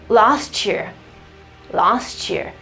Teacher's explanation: You try to pronounce a T and then a E, and the result will be a ch, ch.